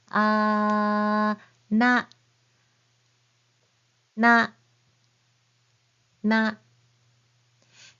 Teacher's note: the characters in this line start with the N sound just like English n but you press your tongue right behind your front teeth